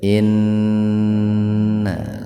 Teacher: Gunnah itu artinya mendengung. Dibaca mendengung disebabkan nun bertasdid, ya. Tahan dua ketukan.